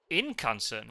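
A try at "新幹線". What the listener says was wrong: Shin. Discord might be cutting off the start, but it is Shin. Shinkansen.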